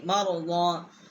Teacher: ایک الف جتنا یہاں ہم نے ضاد کی جو آواز ہے وہ بلند کی ہے۔